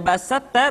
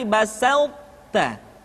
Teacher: pertama adalah idgamnya huruf tho ke dalam huruf Ta di mana leburnya tho ke dalam ta Tidak semua sifat yang dimiliki tho masuk ke dalam huruf ta contohnya laim bas tidak dibaca laim satta tidak basatta tapi basta · bas tidak dibaca laim satta tidak basatta tapi basta sifat e sifat itbaq yang dimiliki oleh huruf th masih tetap ada